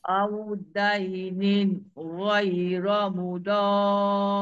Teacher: Mudar adalah mad lazim kalimi musaqqal. Dia kena baca enam.